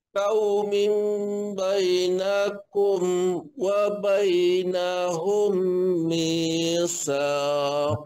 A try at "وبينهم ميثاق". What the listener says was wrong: Tengok bunyi tak sedap mi tu. Kalau bunyi yi sedap kan. Wa bainahum mitsaq. Dia bunyi macam tu lah.